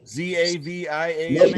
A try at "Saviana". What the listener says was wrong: No, S-A-V-I, Saviana.